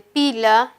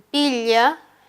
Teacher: En la alternativa D, de pila y pilla, la diferencia de estas dos laterales ya no va a ser la vibración, ya que ellas siempre vibran, siempre son sonoras, sino la diferencia se establece por el punto de articulación. La primera lateral es alveolar y la segunda es palatal.